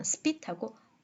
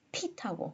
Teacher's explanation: unaspirated p하고 aspirated p 사운드는 두 개 다 allophon이죠